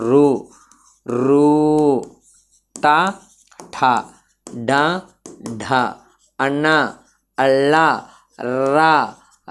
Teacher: నోటి పై భాగమైన ఆ అంగిలి సహాయంతో పలికే అక్షరాలని మూర్ధన్యాలు అంటారు